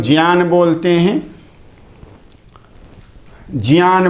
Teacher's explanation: ज ये तालु से उच्चारित होता है और अ कंठ से उच्चारित होता है